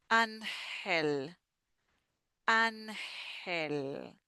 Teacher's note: we have an, and then the G is like a h